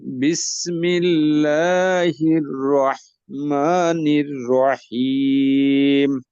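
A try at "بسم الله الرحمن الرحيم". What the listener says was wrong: রয়ের সময় কি রহিম রহিম র, একটু নড়াচড়া করে, এটা যেন না হয় বরাবর।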